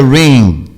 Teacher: Então fica ring, mas é um nasal aberto, ring, né? O G quase que vai sair, mas não chega a se configurar.